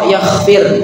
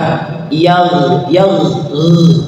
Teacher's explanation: atau ghnya tidak terbaca yakhfir yakhfir atau pakai ko yakfir itu salah huruf ya harus pakai ghe tapi ditarik ke belakang ke bagian halak ditariknya tenggorokan yag yag g ya jadi g yagfir yagfir ya intinya jangan memantul atau jangan pakai k yakfir atau yagfir pakai g Ya, harus latihan ya.